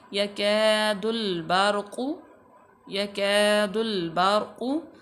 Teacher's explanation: रा साकिन मा कबल मफ्तू, तो रा पूर पड़ी जाएगी